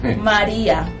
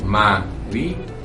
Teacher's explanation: Tienen independencia allí ambas vocales, las finales, por supuesto, y allí también hay un hiato.